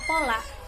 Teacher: Bila berada pada awal kata atau suku kata, fonem P dapat dilafalkan secara lepas. Pada kata pola, fonem P dilafalkan secara lepas untuk kemudian diikuti oleh fonem O.